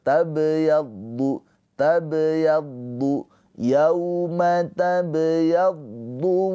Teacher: Ba sukun di tengah kalimah ini adalah ini adalah ee qalqalah sugro. Cara bacanya dipantulkan dengan pantulan yang ringan ya sambil mengalir. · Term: qalqalah sughra